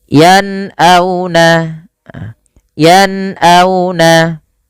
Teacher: ketika melafalkan nun bertemu dengan hamzah di sini diperjelas dengan jelas suara nunnya. Maka dibaca dengan yan'auna dan tidak boleh ada penahanan di dalam pelafalannya. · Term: izhar